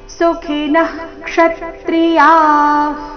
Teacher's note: ಮೊದಲನೇ ವಿಸರ್ಗ ಸುಖಿನ ನಂತರ ಬಂದಿರೋ ವಿಸರ್ಗದ ಉಚ್ಚಾರಣೆ ವಿಸರ್ಗದ ರೀತಿಯೇ ಅಂದ್ರೆ ಅರ್ಧ ಹ ರೀತಿನೇ ಬರಬೇಕು